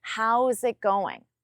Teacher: even though there is no connection between it and going, I still don't pause between them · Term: connect your words